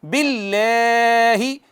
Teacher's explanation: اور کئی دفعہ ایسا کرتے ہیں غنہ نہیں کرتے، مد کرتے ہیں آمنا، نہیں آمنا، تینوں کام کرنے ہیں. باللہ، اس میں جلالت ہے، ما قبل مکسور ہے، آپ کو پتہ ہے، اس کو باریک پڑھتے ہیں